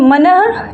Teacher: ये जो विसर्ग का सिंबल लगा है इसका उच्चारण ह में होता है